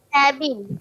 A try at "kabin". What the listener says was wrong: Kabin, jangan sebut kabin. Kita sebut kabin. Kabin. Kabin sebutan dalam bahasa Inggeris. Dalam bahasa Melayu kita sebut kabin.